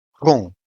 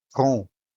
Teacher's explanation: a vowel U followed by an M in the same syllable, while the M ends the syllable, making the U sound nasal